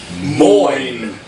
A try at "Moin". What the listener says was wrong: Now use the back of your throat more.